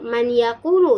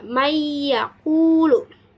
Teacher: Nah, telah disebutkan di sana dalam contoh yaitu nun mati bertemu dengan ya yang mana huruf pertama itu mati, yang huruf kedua yaitu hidup, maka dimasukkan mayyaqulu, tidak dibaca manyaqulu ya, tetapi dimasukkan seolah-olah nunnya itu tidak ada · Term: idgham bigunah